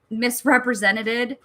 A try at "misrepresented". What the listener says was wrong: Nope. Misrepresented. adding a syllable. You're going even further.